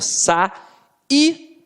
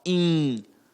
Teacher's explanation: o i não tem som de i, ele vem com um som nasalizado